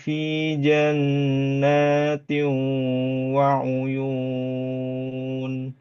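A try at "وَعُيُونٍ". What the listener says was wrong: Nah, ee uyun jangan masuk hidung ya. Jangan waun yun. Ini masuk hidung.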